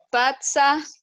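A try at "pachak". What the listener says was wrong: Patak, termina en K.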